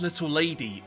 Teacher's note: Your accent is the worst one to have to continually say little lady, because you don't seem to want to do the glottal stop, so it's like every T is pronounced